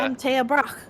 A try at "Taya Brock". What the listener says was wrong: to say it like that every time? Like broccoli. I know, but you always say it so aggressively.